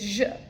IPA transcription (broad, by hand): ʒ